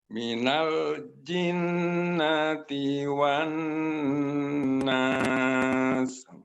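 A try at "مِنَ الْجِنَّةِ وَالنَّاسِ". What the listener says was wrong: Nah, dilamakan lagi, Pak. Minal jinnati wan nas.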